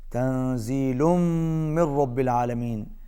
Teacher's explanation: نون ساکن، اس کے بعد زا ہے، یہاں پر اخفا ہوگا، آواز ناک میں جائے گی